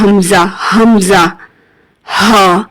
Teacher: حمزہ اور ہا دونوں ہی اقصائے حلق سے ادا ہوتے ہیں۔ دونوں کو ادا کرتے ہوئے سینے میں وائبریشن فیل ہوتی ہے، ٹھیک ہے۔